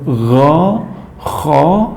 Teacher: tenggorokan bagian atas itu tempat huruf g Kho · Tenggorokan bagian atas itu tempat huruf gha, kha. Nah, pemirsa bisa dicoba dipegang tenggorokannya, ketika mengucapkan huruf gha, kha akan terasa.